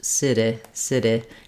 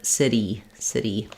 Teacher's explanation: that instead of staying here for the tense e c e having that really high front tense vowel the tongue might drop a little bit and be a little